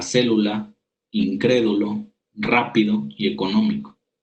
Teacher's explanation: las palabras esdrújulas cuando el acento ocupa el antepenúltimo lugar siempre llevan tilde por ejemplo la palabra célula incrédulo rápido y